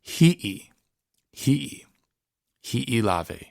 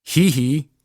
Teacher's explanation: make sure that you're kind of choking off the sound and getting the okina in there